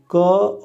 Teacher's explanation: क और जो त है ये अघोष कहलाते हैं और साथ में अल्प प्राण भी हैं ये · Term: अघोष अल्प प्राण ध्वनि